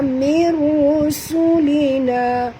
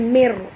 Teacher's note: nun mati bertemu dengan ra, kita kena masuk tanpa dengung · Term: idgham bila guna